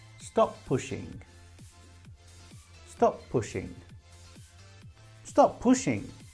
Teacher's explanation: pronouncing only one of the p